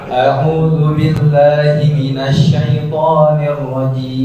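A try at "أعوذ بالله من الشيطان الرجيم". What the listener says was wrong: Huruf Shin belum betul, saya tidak terima. Belum betul.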